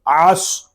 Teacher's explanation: واو لام زبر ول، عین صاد زبر عص، صاد یہ حروف مستعلیہ میں سے ہے، اس کو پر یعنی موٹا پڑھیں گے